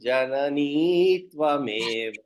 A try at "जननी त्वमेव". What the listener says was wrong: The Janani, you need not pull the Ikara. Janani Tvameva.